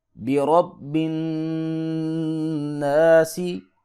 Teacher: نون پہ غنہ ہوگا، ناک سے آواز کو نکالیں گے، نون مشدد جہاں بھی قرآن پاک میں آ جائے وہاں پہ ہم غنہ کریں گے۔